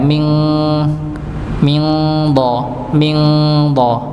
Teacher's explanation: karena huruf dha-nya kan tebal, otomatis kan terangkatnya pangkal lidah hampir menutupi tenggorokan, jadi kayak eng jadinya. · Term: ikhfa hakiki